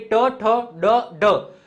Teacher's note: જીભ છે એ મૂર્ધાને સ્પર્શ થાય છે તો એને મૂર્ધન્ય કહેવામાં આવે